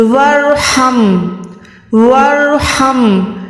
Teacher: یہ بھی رو موٹی ہے، جب بھی رو سے پہلے بھی زبر آئے گی تو رو موٹی ہوگی، ہا حلق کے درمیان سے ادا ہوتا ہے، ایک ہوتا ہے ہا وہ سینے سے ادا ہوتا ہے، یہ ہا حلق کے درمیان سے ہے۔